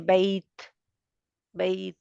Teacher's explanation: शिद्दा के बाद हम्स होता है, हवा बाहर बाद में निकलती है। पहले रुकती है आवाज़, आवाज़ रुक जाती है, तो आवाज़ रुक गई तो उसने क्या किया, आगे हवा को भी रोक दिया, तो फिर जब छोड़ते हैं मखरज तो फ़ौरन हवा बाहर आ जाती है, आवाज़ के साथ ही।